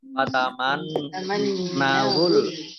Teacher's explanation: nun tasdid ini juga dibaca gunnah mendengung, ya, ditahan kurang lebih 2 harokat